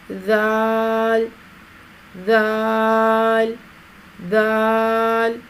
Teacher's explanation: زبان کی نوک کو سامنے والے اوپر کے 2 دانتوں کے اندرونی کناروں سے نرمی کے ساتھ لگا کر باریک آواز میں پڑھیں گے. · ذال نرمی سے ادا ہوگا باریک آواز میں، دبا کے سیٹی جیسی آواز نہیں نکالی جائے گی.